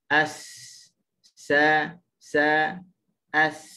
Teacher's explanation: Hujung lidah dia menghampiri dengan gusi bawah. Dia menghampiri. Cuma kadang-kadang tersentuh, kadang-kadang tidak tersentuh lah. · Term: huruf sin